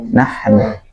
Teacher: Ha letaknya di tenggorokan ini ya, bagian atas.